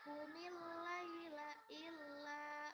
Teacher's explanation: ada fathah bertemu alif dibaca panjang namanya mad tabi'i